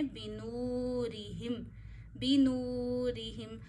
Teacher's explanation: واؤ ساکن سے پیچھے پیش ہو تو واؤ کو بھی ایک انگلی جتنا کھینچتے ہیں · را کو باریک پڑھیں گے یہاں پہ کیونکہ را کے نیچے زیر ہے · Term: واؤ مدہ